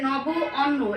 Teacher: যেহেতু আমরা সন্ধি করতেছি সেহেতু বলা হচ্ছে নব অন্ন, এই দুটি পাশাপাশি উচ্চারণের ফলে আমরা যে নবান্ন শব্দটি পাই, এই দুইটা শব্দের মিলনকেই এখানে বলা হয় সন্ধি। অর্থাৎ এখানে আমরা পাবো যেটা নবের অ, তারপরে আছে অন্যের অ, এই দুইটা মিলিত হয়ে হয়েছে আ